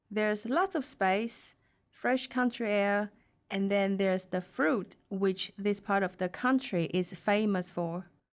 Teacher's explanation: She pauses where there are commas and also briefly at the end of the sentence.